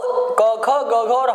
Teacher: क ख ग घ और ह का उच्चारण स्थान क्या है, कंठ है। तो हम इन पांच वर्णों में से किसी एक को करेंगे तो उसी को करेंगे जिसका उच्चारण स्थान कंठ हो।